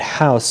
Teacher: I think the word house in English has a pretty close H, which is a voiceless glottal fricative.